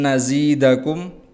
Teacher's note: Nazi ini mat tabi'i karena ada ya diikuti oleh kasroh maka dipanjangkan 2 harokat. Dakum, kum illa ada mim sukun yang bertemu dengan hamzah maka ini disebut dengan idhar.